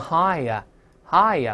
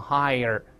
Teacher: 没有这个卷舌音，美音呢，因为有个字母▁r▁勾舌头回来